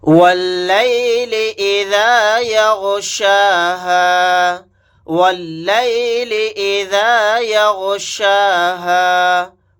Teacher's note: واو کو ڈائریکٹ لام کے ساتھ ملائیں گے، الف نہیں پڑھا جائے گا